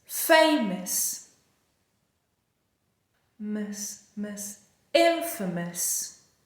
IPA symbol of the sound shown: ə